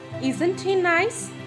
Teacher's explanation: The tone is used in genuine yes no question where the speaker is sure that he doesn't know the answer and that the addressees know the answer. Such yes no questions are uttered with a rising tone.